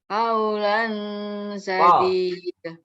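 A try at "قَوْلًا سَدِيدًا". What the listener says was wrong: Sanes K Bu nggih, ko nggih. Qafnya itu ko, ulan.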